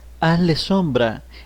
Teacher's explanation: Z and S have the same pronunciation, except in Spain.